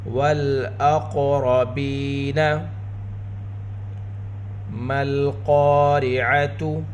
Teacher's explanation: قاف حروف مستعلیہ میں سے ہے، قاف کے اوپر قلقلہ بھی کیا جائے گا، قاف حروف قلقلہ میں سے بھی ہے۔ را کے اوپر زبر، را کو پر پڑھیں گے، با کے نیچے زیر ساتھ یا ساکن یا مدہ، با کی آواز کو دو حرکت کے برابر کھینچ کر پڑھیں گے۔